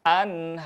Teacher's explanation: Nah, di sana membaca yang pertama melafalkan huruf ro-nya dibaca dengan tebal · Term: tafhim